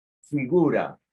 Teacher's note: son fricativas que se pronuncian con la unión del diente y el labio